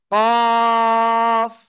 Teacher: জিহ্বার গোড়া তার বরাবর উপরে তালুর সাথে লাগিয়ে কফ এরকম মোটা আওয়াজে কাফ